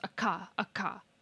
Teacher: Your tongue in an a ka is making contact with the top of your mouth much further back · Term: broad consonant